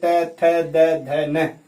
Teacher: दांत के पास जीभ स्पर्श करती हुई बोलती है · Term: दांत से